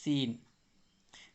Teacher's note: یہ سین میں ایک سی ٹی کی آواز ہوتی ہے